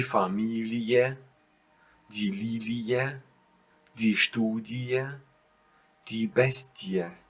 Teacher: So you don't make a long E, you pronounce it separated.